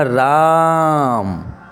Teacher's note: के के वर्णों के उच्चारण से ज्यादा समय लेता है और प्लुत स्वर किसे कहेंगे जिन स्वरों के उच्चारण में अधिक समय लगता है जैसे कि मैंने कहा राम तो ऐसा लगता है आ जो है कई बार गूंज रहा · में अधिक समय लगता है जैसे कि मैंने कहा राम तो ऐसा लगता है आ जो है कई बार गूंज रहा है